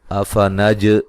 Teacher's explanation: افنج جیم پہ قلقلہ کریں گے۔